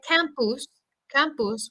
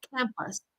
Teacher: we've got that schwa sound for the u vowel